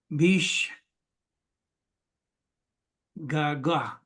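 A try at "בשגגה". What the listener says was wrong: Very good. Bishgaga.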